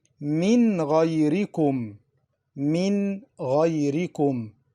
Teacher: Noon Sakinah is pronounced clearly. Why? Because of the throat letters Ghayn after it.